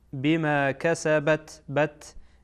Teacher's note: تا هم از حروفی است که شدت داره، از حروفی که صدا حبس میشه